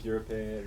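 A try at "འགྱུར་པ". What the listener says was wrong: No, not Gyurpe. Yeah, please, pre-nasals.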